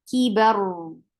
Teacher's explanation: I'm not stopping it abruptly, but giving a medium flow of sound on ra · ra will be heavy here because ra with sukoon